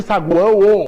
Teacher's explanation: O A, que está nasalizado, olha só, é uma vogal. E o O, está aqui com o som de U, tá? É uma semivogal. · você vai ter uma semivogal, uma vogal e outra semivogal. Ó, você vai ter aqui uma U, é uma semivogal. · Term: tritongo